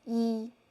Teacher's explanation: if you say this word 一 the one singly alone, we just use the original tone, first tone